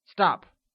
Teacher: downward slant from left to right over the vowel and is pronounced in a rapidly falling pitch that goes from high to low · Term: falling tone